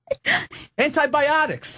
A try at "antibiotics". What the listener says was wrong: Why is the emphasis on bi there?